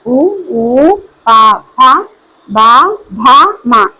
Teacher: పెదవి సాయంతో పలికే అక్షరాలని ఓషటియాలు అంటారు